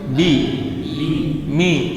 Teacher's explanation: Bi Mi sama di makhraj yang sama di bibir